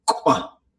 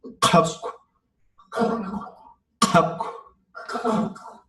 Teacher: You get that little puff of air at the end that blows out that candle.